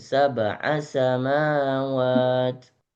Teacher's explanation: A-nya samawat jangan dipanjangin